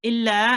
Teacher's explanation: Illa, and you prolong it for 2 seconds because there is this alif here, and it's an alif maddiya now.